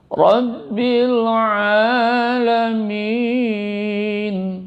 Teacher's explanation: A panjang di dalam suaranya tenggorokan